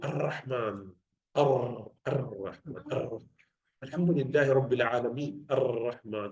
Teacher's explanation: that's not right. That's over trilling. Only one or two is fine.